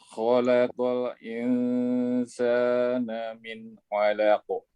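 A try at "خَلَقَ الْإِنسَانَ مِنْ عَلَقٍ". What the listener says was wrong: Lamnya jangan diroumkan. Biasakan menghabiskan sifatnya. Khalaq.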